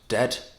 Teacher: And that is because of the d sound at the end. The technical term for that, I think, is an alveolar stop because it means it's a closed and short sound.